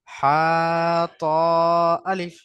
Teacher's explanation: প্রথমে বা একালিফ টান দিলাম, জয় একালিফ টান দিলাম, আর নুন 3 আলিফ টান দিয়ে পড়লাম।